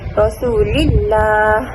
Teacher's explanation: huruf sebelumnya berbaris kasrah contohnya dalam surah Attaubah ayat 1 jadi lam pada perkataan Allah dibaca dengan tipis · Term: lafaz jalalah